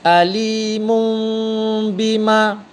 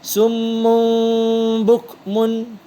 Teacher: menukarkan bunyi nun kepada mim serta dengung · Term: iklab